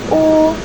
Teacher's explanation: final U termasuk ke dalam vokal belakang dengan posisi lidah tinggi, bentuk bibir bulat dengan sonoritas tutup U.